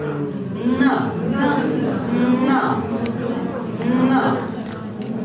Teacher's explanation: Попробуйте произнести теперь носовой звук. Зубной носовой.